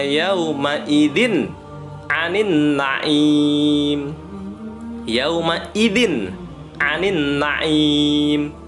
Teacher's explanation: n-nya jelas karena huruf tanwin kasrah tanwin bertemu dengan Ain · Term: izhar halqi